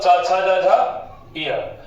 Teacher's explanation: ई, बड़ी ई, चवर्ग, य और श का उच्चारण स्थान तालु होता है। और ये तालव्य है, तालव्य है।